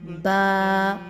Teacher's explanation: دونوں ہونٹوں کو جب ہم اس کے باہر کے حصوں کو آپس میں ملاتے ہیں اور تری والے حصے بھی آپس میں ملتے ہیں تو با کی ادائیگی ہوتی ہے با.